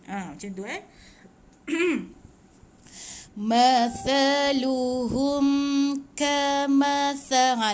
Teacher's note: Hujung lidah di antara 2 gigi. Dia macam tumpul bunyi dia sikit.